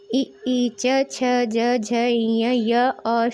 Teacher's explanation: इ ई, च, छ, ज, झ, ञ, य और श तालव्य व्यंजन है। इनके उच्चारण में तालु और जीभ के स्पर्श से होता है।